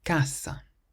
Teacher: So we stress the first part of the word, not the end, because it ends in a vowel.